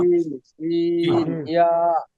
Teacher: জিহ্বার মধ্যখান তার বরাবর উপরে তালুর সঙ্গে লাগাইয়া উচ্চারিত হয় জিম সিন ইয়া। হ্যাঁ, ওই যে আমরা শুরুতে মূলনীতি বলছিলাম, শক্ত করে, ঠিক শক্তভাবে করলে অটোমেটিকলি জায়গা মতোই হয়ে যাবে।